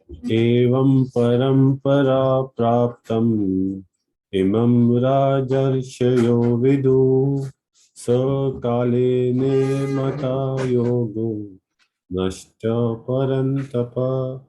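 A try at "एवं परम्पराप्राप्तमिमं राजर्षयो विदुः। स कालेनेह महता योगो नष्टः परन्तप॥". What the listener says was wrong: No worries, your meter went a little, but that's fine.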